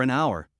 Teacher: even though hour starts with an H the H is silent so it sounds like it starts with a vowel